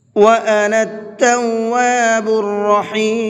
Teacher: نون کو ڈائریکٹ تا میں ملائیں گے اور بیچ میں جو 2 الف ہیں اور لام ہیں یہ نہیں پڑھا جائے گا، اور را کو پر کر کے پڑھیں گے رحیم کے اندر